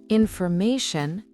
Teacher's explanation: On ne frappe pas la dernière syllabe mais celle juste avant.